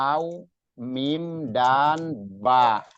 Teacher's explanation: Dia bertemunya bibir atas dan bibir bawah itu waw, mim, dan ba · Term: kelompok bibir